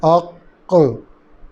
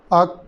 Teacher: دونوں حصے ملے جدا ہوئے اور قلقلہ ہو گیا. جہاں قلقلہ نہیں کرنا اق، وہاں دونوں حصے اپنی جگہ ٹکے رہے اور آواز ختم ہو گئی تو قلقلہ نہیں ہوگا.